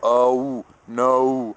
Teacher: the English O sound is kind of like an O and then a W.